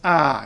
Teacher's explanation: is nope stress is always on the first syllable in Czech that accent just means that it's not uh it's ah it's longer